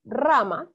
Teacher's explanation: rama es fónico o prosódico porque se carga la voz en ra, pero no lleva tilde. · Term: prosódico o fónico